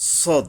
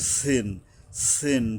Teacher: সদ মানে এটা কিন্তু ওই সিনের মতো পাতলা হবে না, এটা শক্তভাবে এখান থেকে মোটাভাবে আদায় হবে, সদ। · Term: শক্তভাবে সদ